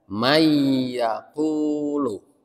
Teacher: nun mati itu atau tanwin itu dia tidak berbunyi n lagi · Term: idgham